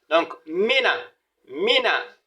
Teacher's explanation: il ne faudrait pas tirer le mi hein, parce qu'il n'y a pas de voyelle longue ici.